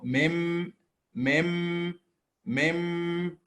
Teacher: with the meme, the two lips are matching, then the nasal sound automatically being created.